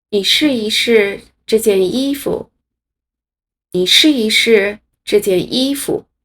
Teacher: 这句话中的一在两个动词试之间变成了轻声